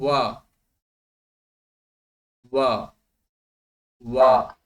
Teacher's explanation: वकारस्य दन्तौष्ठम, दन्तानां सहयोगः भवति ओष्ठस्य ओष्ठयोः च